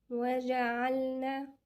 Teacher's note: وجعلنا طبعا مفتوحة، ونخلي بالنا الجيم من عند وسط اللسان مع الحنك الأعلى لفوق. وجع من عند الحلق مخرج الحلق.